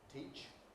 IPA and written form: tiːʧ (teach)